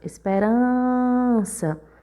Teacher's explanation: Quando a gente chama a palavra esperança, esperança. Observe que a gente demorou mais no rã. Então, o rã é a sílaba tônica da palavra e pelo rã ser a penúltima sílaba, essa palavra também é paroxítona.